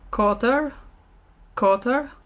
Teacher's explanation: Das ist das retroflexe R.